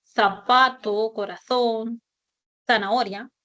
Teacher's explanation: Articulación del fonema fricativo interdental. Esta es la famosa Z española. El sonido que yo les decía de zapato, corazón, zanahoria.